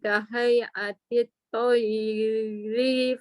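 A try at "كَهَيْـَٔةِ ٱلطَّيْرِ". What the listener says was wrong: Kahayati toyri fanfukhu fi. Tak boleh panjang. Kahayati toyri fanfukhu fi. Ambil pendek-pendek dulu. Ri tak boleh panjang. Kahayati toyri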